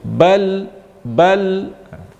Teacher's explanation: Tetapi lam itu sifatnya adalah bainiyah, ada sifat empuknya